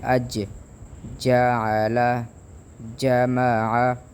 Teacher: اس حرف جیم زبان کا درمیان اور اس کے بالمقابل اوپر والا جو حصہ ہے ہمارے منہ کا، اس کے ساتھ لگنے سے حرف جیم ادا ہوتا ہے